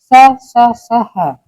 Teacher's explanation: उष्म व्यंजन वे व्यंजन होते हैं जिनका उच्चारण करते समय जो हवा है जो मुख से जो वायु निकलती है वो थोड़ी रगड़ खाकर निकलती है तो उससे थोड़ा सा घर्षण पैदा होता है और हवा गर्म होती है।